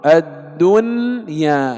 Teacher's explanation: لكن لا ندغم النون في الياء فنقول الدنيا، لا، يجب الإظهار، الدنيا، كما ننطق ينأون، إظهار، ويسمى إظهارا مطلقا.